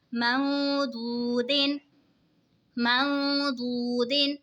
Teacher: नून साकिन के बाद हुरूफ़े इक़फ़ा का दुआद आ रहा है तो इक़फ़ा होगा यानी गुन्ना करके पढ़ेंगे